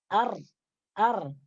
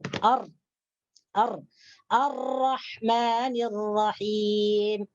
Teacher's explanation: hujung lidah diangkat ke gusi gigi gunting atas serta melengkung kebelakang hujung lidah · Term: huruf ro